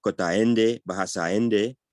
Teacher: In Ende, the word for the language itself has no underlying glottal stop.